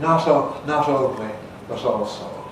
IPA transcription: not̞ only this but̞ also